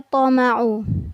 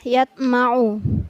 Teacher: Ada pantulan pada huruf to